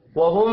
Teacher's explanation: यहाँ पर मीम मुशद्दद है, गुन्ना करेंगे।